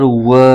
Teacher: واو پر زبر ہے اور آگے الف ہے، الف سے پہلے زبر آئے تو الف مدہ ہوتا ہے، اس کو ایک الف کھینچ کے پڑھیں گے